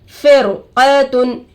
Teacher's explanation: रोए साकिना के बाद हुर्फ़े मुस्तालिया में से क़ाफ आकर है रो को पुर करके पढ़ेंगे यानी रो को मोटा करके पढ़ेंगे